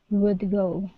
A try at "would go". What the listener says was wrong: So don't finish that D. Would go.